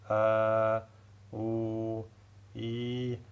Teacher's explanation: il estime que toutes les trois, elles sortent de l'jawf, de ce vide. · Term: la sortie de l'jawf